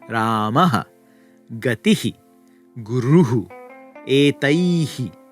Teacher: That's that colon that we put at the end of words, the H echo symbol, and it's often found in masculine words, for example, and it's pronounced by making a h sound and then echoing the short version of the preceding vowel. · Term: Visarga